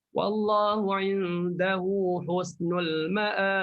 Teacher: Bunyi qalqalah sebab sukun mahad.